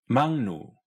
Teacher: Korean's L transforms into an N